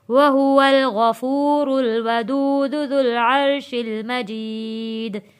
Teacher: دال پہ جب ہم نے وقف کیا تھا تو یہ دال حروف قلقلہ بن گیا